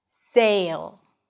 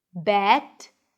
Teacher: So if you can't hear a difference between those words, make sure you move your tongue to get to the e sound before the last consonant.